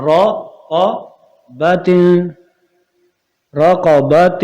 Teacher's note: را اور قاف موٹا ہوں گے، اور با جو ہے یہ باریک ہی رہے، اور غنہ بھی ہوگا